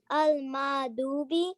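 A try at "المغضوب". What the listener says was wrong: Al-Maghdubi. Al-Maghdubi. Ghain. This is ghain.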